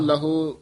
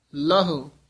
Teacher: ਲਹੋੜੇ ਨਹੀਂ ਲਾਉਣੇ ਕਹੋ ਲਹੋ ਇਉ ਨਹੀਂ ਲੈਣਾ ਕਹੋ ਲਹੁ ਇਸ ਤਰ੍ਹਾਂ ਲਘੂ ਮਾਤਰਾ ਬੋਲਣੀ ਹੈ